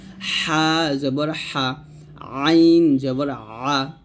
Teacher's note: শুরু থেকে উচ্চারণ করতে হবে হা জবর হামজাহ জবর আ এবং আইন এই দুটি হরফ হলকের মাঝখান থেকে উচ্চারণ করতে হবে